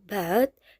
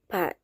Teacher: bedanya ada pada konsonan awal yaitu B-nya bergetar dan P-nya tidak bergetar